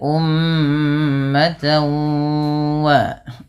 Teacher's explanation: memasukkan bunyi tanwinnya kepada huruf waw. Maka ummatan wa baru dilepas. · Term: idgham